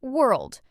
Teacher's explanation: Some learners add an extra sound between were and old, but it's just one smooth sound